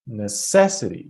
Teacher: I have to put the stress on the second syllable.